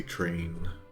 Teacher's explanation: whenever there's like a T and R in English, we tend to say it with like a CH sound.